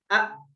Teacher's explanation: Ketika kita mengucapkan huruf alif, misalnya huruf alif sukun, a, itu kan makhrajnya a itu di tenggorokan bagian bawah. Itu tenggorokan bagian bawah itu tertutup sehingga nggak ada nafas yang mengalir ketika kita mengucapkan huruf a gitu. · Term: huruf jahar